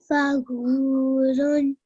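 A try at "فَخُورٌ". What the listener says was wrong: This is letter Kha and not Ghain. Fakhurun.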